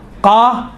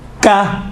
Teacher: قاف اور کاف میں دیکھیں دونوں کا تلفظ ایک ہی ہے، فقط یہ ہے کہ جو زبان کی جڑ ہے، زبان کی جڑ سے قاف نکلتا ہے، اور زبان کی جڑ اگر نرم والی جگہ، اوپر والی نرم والی جگہ سے جب ٹچ ہوتی ہیں تو قاف نکلتا ہے، سخت والی جگہ سے ٹچ ہوتی ہیں زبان کی جڑ تو کاف نکلتا ہے